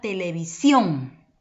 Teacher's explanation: la última sílaba sión es la que posee mayor fuerza de voz llamado entonces sílaba tónica